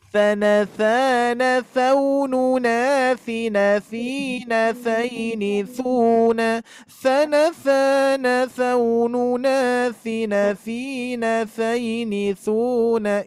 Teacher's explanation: Tha itu ibu-ibu sekalian ujung lidah nempel ke gigi seri atas ya. Tha, ujung lidahnya harus keluar menjulur sedikit ya.